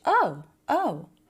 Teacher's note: So the word oh said lightly, very high in pitch.